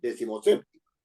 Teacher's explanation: Pero si yo las uno, como lo permite la Real Academia, y digo decimoséptimo, la fuerza de voz de décimo se debilita y se va a séptimo, a sep, efectivamente, decimoséptimo.